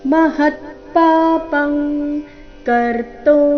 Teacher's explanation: ಇಲ್ಲಿ ಅನುಸ್ವಾರದ ಉಚ್ಚಾರಣೆ ಕ ವರ್ಗದ ಅನುನಾಸಿಕದ ರೀತಿ